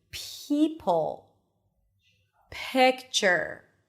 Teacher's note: It's like you're whispering before you are pronouncing the vowel that comes after the p. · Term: aspirated